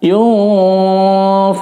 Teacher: Ditahan 4 ketukan. Yunfiqun, ada sedikit kayak engnya, cuma tidak jelas tentunya. Enggak sampai yung, tapi yunfiqun. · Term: ikhfa